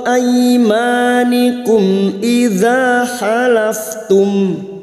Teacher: mim sukun bertemu hamzah idhar syafawi mim sukun dibaca jelas tanpa mendengung